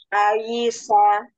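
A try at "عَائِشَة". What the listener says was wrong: Jangan Aisyah, tapi Aisyah. Huruf ainnya jangan oh, tapi biasa aja. Karena sebelah huruf tebal, dijaga tipisnya di huruf sebelum tebalnya.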